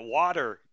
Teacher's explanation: If you're American, you might say water with like a D sound, like a water.